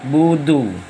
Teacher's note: du makhrajal huruf, ujung lidah dengan urat gigi yang di atas